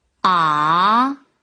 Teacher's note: 第三声是上声，降低而后升